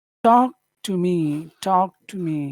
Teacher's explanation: you're going up at the end but that's not very typical of an English phrase you probably would want to finish low yeah okay so uh